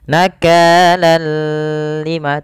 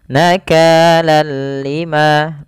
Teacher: Artinya kita membacanya hanya idgham saja tanpa disertai dengan gunah idgamnya apa idgamnya adalah kita memasukkan tanwin ke huruf lam Seraya · kita memasukkan tanwin ke huruf lam, seraya kita hilangkan suara nunnya dan kita ganti dengan huruf lam. Awalnya nakalan ketemu lam, ganti dengan lam nakalal lima, tapi tidak disertai dengan gunnah, tidak ditahan seperti ini. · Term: Idgham bilaaghunnah, idgham bila gunnah